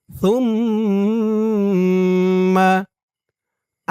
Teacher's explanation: সার উচ্চারণটা একদম নরম হবে, জিহ্বার মাথা উপরের দাঁতের মাথার সাথে লাগবে সার উচ্চারণটা করার সময়।